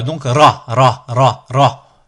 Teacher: Le ra, on a la pointe de la langue qui va venir s'appuyer contre la muqueuse palatine en faisant vibrer la langue. Du coup ici on a le ra, on a dit que c'était le R roulé de l'espagnol.